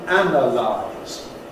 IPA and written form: ˈænəlaɪz (analyse)